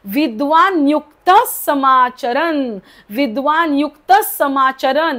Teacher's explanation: पुढे स आहे, विसर्गाचा उच्चार होणार नाही. ओके काय होतं, विद्वान युक्तच्या पुढे जो विसर्ग आहे त्याचा उच्चार होणार नाही, कारण पुढे स आहे.